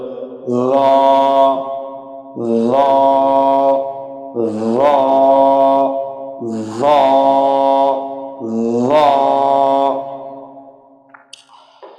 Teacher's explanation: জিহ্বার আগা সামনের উপরের দুই দাঁতের আগার সাথে লাগিয়ে আওয়াজকে মোটা করে একালিপ টেনে পড়তে হবে